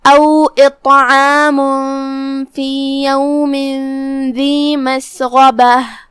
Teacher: गैन की अदायगी हलक के ऊपर वाले हिस्से से है, गैन भी हुरूफ तफखीम में से है, तो हम गैन को भारी आवाज में पढ़ेंगे